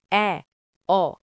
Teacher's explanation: নিম্ন মধ্য স্বরধ্বনি অ জিহ্বা নিম্ন ও মধ্যের মাঝে থাকে